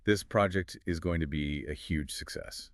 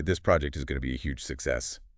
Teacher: hear that upward inflection at the end yeah it makes the speaker sound unsure of themselves even if